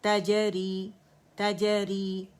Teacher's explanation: अच्छा कलकला करेंगे, जीम में कलकला, हर्फ कलकला है